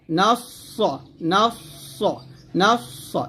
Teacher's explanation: সদ সিনের মতো উচ্চারণ করা যাবে না, সদ মোটা উচ্চারণ করতে হবে